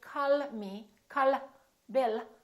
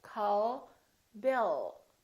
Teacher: So the tongue is relaxed and it touches right behind the upper teeth and it stays there. So the American L is prolonged. It's softer and longer.